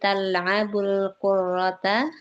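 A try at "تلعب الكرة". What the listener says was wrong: Qurata, jangan tasydid. Qurata.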